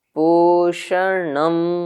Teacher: ण में अनुदात है तो मैंने उसको नीचे लाया।